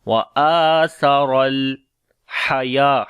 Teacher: Ha we read from the middle of the throat. Ya we long due to standing fatha.